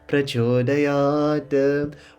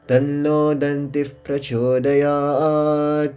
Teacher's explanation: We've got Visarga now. Danti becomes Dantif.